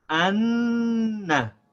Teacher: we drag the sound of the Noon from one part to the next. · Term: Shad